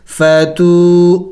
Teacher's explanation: फा ज़बर फा, ता वाव पेश तू, फ़तू वाव मद्दा है, वाव साकिन है, उससे पहले पेश है, तो इसको एक अलिफ का मकदार खींचा जाएगा